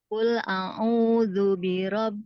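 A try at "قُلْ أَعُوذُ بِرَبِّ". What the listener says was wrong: A'u pertama itu huruf hamzah, keduanya baru huruf ain. Oke, coba sebutin aku, aku. Jadi bukan aku, aku. Ya, tadi ibunya kul a'u, tidak. Jadi hamzanya jangan ikut-ikutan ain.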